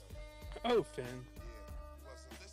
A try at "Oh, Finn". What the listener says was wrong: Come on, you're not saying it right. You gotta put a few more O's in there.